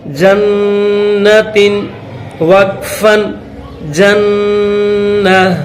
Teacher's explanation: وقف کریں گے، اسٹاپ کریں گے تو یہ تا ہا بن جائے گی، اس کو پھر ہا کر کے پڑھیں گے.